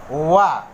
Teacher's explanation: वा का उच्चारण दांत और ओष्ठ दोनों से होता है।